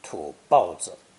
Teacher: 包 is sometimes pronounced fourth tone to better express disdain